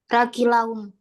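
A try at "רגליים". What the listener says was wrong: Yodnya dibaca I. Ragilaim. Ragilaim. Tapi dia seva di sini, jadi dia G-nya mati adalah raklaim. Raklaim. Raklaim.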